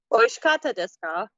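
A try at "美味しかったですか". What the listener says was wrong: Just zero effort on the intonation. Oishikatta desu ka?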